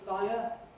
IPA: ˈfaɪə